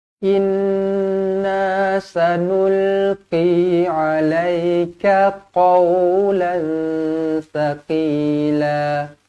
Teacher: tanwin tak selari bertemu dengan ta ikhfa hakiki dengung dua harakat